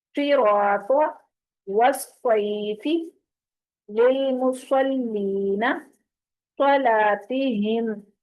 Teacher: صاد جو ہے وہ سیٹی کے ساتھ ساتھ پر بھی پڑھا جاتا ہے